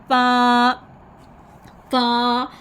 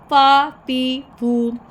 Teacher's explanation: फ़ा में हमने ऊपर वाले दांतों के किनारे निचले गीले होंठ के तर हिस्से से लगाने हैं। ऊपर वाले जो दांत हैं ना उनको आपने उनके जो किनारे हैं वो निचले गीले हिस्से से, होठों के गीले हिस्से से लगाएंगे, तो फ़ा अदा करेंगे फतहा, कसरा और जमा के साथ।